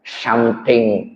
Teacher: T-nya ujung lidah ke tengah langit-langit.